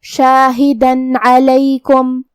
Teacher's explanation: حرف العین کو ہم حلق کے درمیان والے حصے سے ادا کریں گے